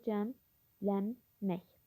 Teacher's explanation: N samiti M-ya çevrilir. Sonuncu K samiti İ səsinə çevrilir.